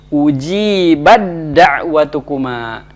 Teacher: Tak mati bertemu dengan dal, maka di sini hukumnya adalah dibaca idgham dengan idgham kamil, idgham yang sempurna